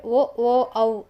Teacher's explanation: ಕಂಠೌಷ್ಟ್ಯ ಅಂದರೆ ಓ ಓ ಔ, ಇದು ಕಂಠ್ಯೋಷ್ಟ್ಯ, ಕಂಠ ಹಾಗೆ ತುಟಿಯ ಸಹಾಯದಿಂದ ಉಚ್ಚಾರಣೆ ಮಾಡುವಂತಹ ಅಕ್ಷರಗಳು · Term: ಕಂಠೌಷ್ಟ್ಯ ವರ್ಣಗಳು